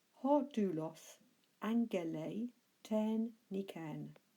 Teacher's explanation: well done if you got the ng sound there for the double gamma